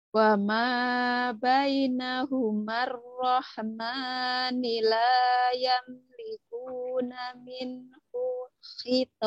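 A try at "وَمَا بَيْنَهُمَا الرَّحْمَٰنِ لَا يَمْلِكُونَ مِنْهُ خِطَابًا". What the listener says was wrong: Masih. Minhu hito. Masih tuh. Masih ketahan.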